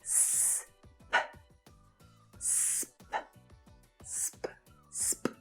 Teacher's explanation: S and p are both unvoiced consonant sounds, and the sound is made by pushing air through your mouth.